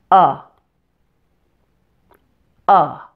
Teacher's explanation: if you're familiar with the schwa sound in English it has the exact same mouth position but it's a stronger sound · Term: short you